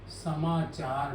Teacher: इसे अनुस्वार कहते हैं। अनुस्वार के बाद यदि स्वर आएगा तो अनुस्वार म में बदल जाएगा।